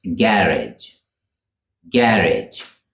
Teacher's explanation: with the stress on the first syllable